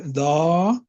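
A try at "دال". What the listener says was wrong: दाल फतह, पूरा नाम बोलो।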